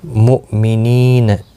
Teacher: دو واو مدہ بھی ہے، ایک الف کی مقدار کے برابر کھینچ کر پڑھیں گے. مؤمنین، حمزہ ساکن کو جھٹکی کے ساتھ پڑھا جائے گا. نی یا مدہ ہے، ایک الف کی مقدار کے برابر کھینچ کر پڑھیں گے.